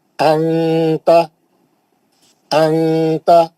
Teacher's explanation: नून की आवाज को नाक में लाकर छुपा लेंगे